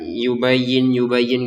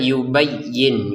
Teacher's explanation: Y-nya jangan lupa didangungkan untuk y-nya ya. Jangan sekedar yubayyin yubayyin gitu ya. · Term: didengungkan